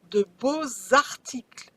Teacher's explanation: I drag the X to the A, but it still sounds like Z.